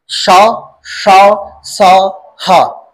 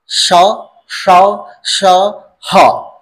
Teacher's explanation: और हीट कैसे कर रही पैदा? क्योंकि जीभ कभी मुड़ रही, कभी तालू पे टच हो रही, इस वजह से हवा को बाहर आने में संघर्ष करना पड़ रहा है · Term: ऊष्म संघर्षी व्यंजन